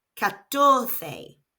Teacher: The stress in this word falls on the middle syllable